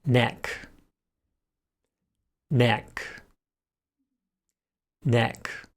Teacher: the tip of the tongue comes into contact with the alveolar ridge